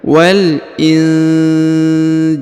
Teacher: Huruf nun sukun bertemu dengan ja ya, maka didengungkan ya. Wal injil. Ya, didengungkan dan disamarkan ini ya.